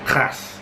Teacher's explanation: When you say krass, it's all the way at the back of the throat, moving the UVULA